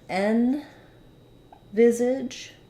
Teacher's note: Visage has the stress on the viz syllable